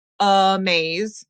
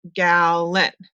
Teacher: listen for the schwa in the first syllable, like amaze, or in the second syllable, like gallon